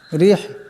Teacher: রা নিচে জির আছে, ইরাকে পাতলা আওয়াজে পড়তে হবে।